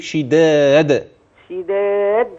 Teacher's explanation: شداد لما نقف نقلق الدال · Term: نقلقل الدال